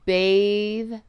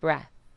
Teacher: When the sound is voiced at the end of a word, then you hold the vowel that comes before for two beats.